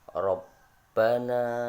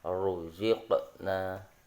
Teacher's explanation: Yang pertama ada yang tafkhim atau dibaca tebal